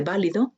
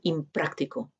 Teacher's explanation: esta nasal adopta, como si dijéramos, el punto de articulación del sonido siguiente, se hace más similar al sonido siguiente, inválido, quizás sea bilabial, porque la B de válido también es bilabial.